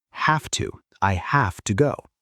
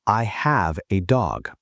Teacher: When we say I have to work, the v sound almost becomes an f sound.